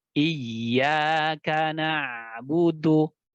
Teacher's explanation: Tapi kalau ia hanya sedikit alamiah saja suara yang mengalir ke rongga hidungnya, maka itu tidak mengapa. Ya, yang penting ada aliran sedang pada huruf ainnya.